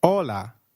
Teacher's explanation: H is always silent in Spanish we do not pronounce it